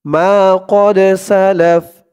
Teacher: থামার কারণে ফার উপরে জবরটা সাকিন হয়ে গেছে লামের উপরে জবর দিয়ে ফাকে দৌড়লে যেমন উচ্চারণ হয় এখানে তেমন